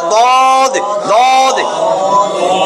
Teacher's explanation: 7 নম্বর মাখরাজ জিহ্বার গোড়ার কিনারা উপরের মারির দাঁতের গোড়ার সঙ্গে মিলাইয়া, উপরের মারির দাঁতের গোড়ার সঙ্গে মিলাইয়া দদ, যে কোনো এক পাশ, ডাইন পাশ বা বাম পাশ আপনাকে লাগাইতেই হবে, নাহলে বুঝবেন উচ্চারণ হয় নাই।